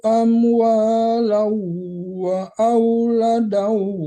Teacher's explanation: Kalau tanwin ketemu waw, nama hukumnya idgham bi gunnah, tapi ditarik ke hidung, jangan lau. Kalau lau itu sekedar tasdid, belum ketarik ke hidung ya.